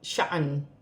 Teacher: 2 زیر کی تنوین گر جائے گی، نون ساکن ہو جائے گی اور وقف میں ہلکی سی آواز آئے گی